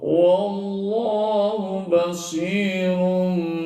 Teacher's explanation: tapi basirum itu adalah dibaca iqlab ya dibaca iqlab Kenapa iqlab karena tanwin menghadapi huruf ba maka Sura tanwin berubah jadi mim